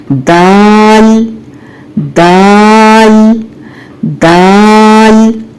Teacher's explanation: دال کو بھی یہیں سے ادا کرنا ہے، لیکن دال ادا کرتے ہوئے زبان کی جڑ کو نیچے رکھنا ہے اور باریک آواز میں ادا کرنا ہے